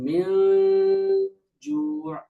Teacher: প্রস্তুতি নিতে গেলে দেখবেন যে হরফটা যেটা যেমন গুন্নাটা তেমনই হবে যেহেতু পরে হরফ পাতলা জিম তাহলে আমার গুন্নাটাও পাতলা হয়ে যাবে